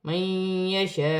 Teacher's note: میں پیش گر جائے گی اور حمزہ ساکن ہو جائے گی، وقف کی صورت میں حمزہ میں جھٹکا پیدا ہوگا